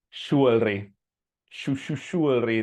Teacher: The J many times sounds like an SH